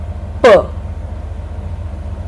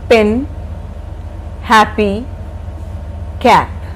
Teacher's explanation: P. Both the lips come close together.